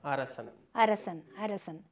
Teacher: இடையினத்துல வரக்கூடிய ர வந்து பல்லினுடைய அடிப்பகுதியை நாவினுடைய நுனி தொடும் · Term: சின்ன ர